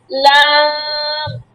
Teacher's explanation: জিহবার আগার কিনারা তার বরাবর উপরের দাতের মাড়ির সঙ্গে লাগাইয়া উচ্চারিত হয় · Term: লাম